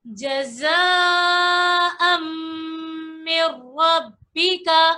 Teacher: را کو موٹا پڑھیں گے کیونکہ را کے اوپر زبر موجود ہے.